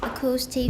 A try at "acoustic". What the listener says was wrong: That was okay, except for you're saying acoustic. It should be acoustic. And in this case, it's just a schwa, though. So acoustic, acoustic, 都可以, but let's just use a schwa. Acoustic phonetics. Acoustic phonetics.